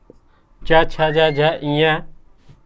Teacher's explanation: च छ ज झ ञ, या स, ये सब क्या है, तालु से बोले जाते हैं